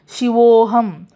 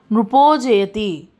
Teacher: ఈ విసర్గోత్వ సంధిలో విసర్గకి ముందు అనే అక్షరం ఉన్నా లేదా విసర్గకి తర్వాత అనే అక్షరం ఉన్నా అప్పుడు అనేది ఉ కింద మారుతుంది పలికే విధానంలో ప్రొనౌన్సియేషన్ లో ఉ కింద పలుకుతాం కానీ రాసేటప్పుడు ఓకారం పెట్టి రాస్తాం